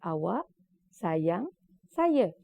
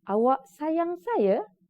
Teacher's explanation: dia menjadi ayat tanya bila awak sayang saya apabila ada tekanan di hujungnya